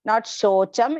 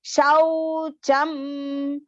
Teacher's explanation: Dhriti-shau, long shau. Okay, not shocham, it is shaucham.